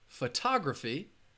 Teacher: both the first syllable and the third syllable have the schwa sound so in this word photography it has four syllables four syllables